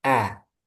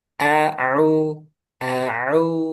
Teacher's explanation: Nah, itu harus jelas. A itu pangkal tenggorokan, kalau Ain tengah tenggorokan.